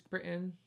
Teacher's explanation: we don't aspirate our T's